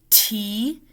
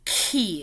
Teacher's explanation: we're saying a sound in the front, a sound in the back. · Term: fronting